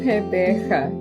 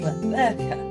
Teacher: So the emphasis is on the second syllable